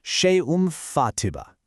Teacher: you take that n sound and you flip it into a light m sound. You just gently bring your lips together and hold it with this lovely little hum through your nose. We call this beautiful nasal sound a ghunnah. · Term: iqlab